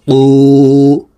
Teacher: কফ হরফ জিহ্বার গোড়া তার বরাবর উপরের তালুর সঙ্গে লাগাইয়া উচ্চারণ করে পড়তে হবে।